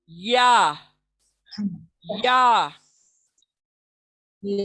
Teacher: इसका मखरज वही है जहां से जीम निकला और शीन निकला, यानी जबान के बीच का हिस्सा ऊपर तालू को लगने से